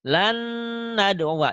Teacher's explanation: Contoh ini contoh idgham bigunah ya. Diidghamkan disertai dengan dengung. Ditahan dan dengungnya ya nih.